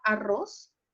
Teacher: Exactamente, pero si tú te fijas, dices, no, pues es que no aplica la regla de las agudas porque no tiene N, porque no tiene S, porque no tiene vocal, pero la última sílaba, que es la regla de las agudas, la última sílaba es la que suena más fuerte. Entonces coloco el acento, no lo coloco porque no termina en N, S o vocal, pero sí la última sílaba suena más fuerte. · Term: acento prosódico